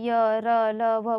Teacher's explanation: इसमें देखिए सिर्फ वायु सीधे बाहर निकल जाएगा, अवरोध बिना किसी अवरोध के, बिना कहीं टच वगैरह हुए ही, ठीक है। इसीलिए जो है इनको अर्ध स्वर भी कहा जाता है। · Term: अंतःस्थ व्यंजन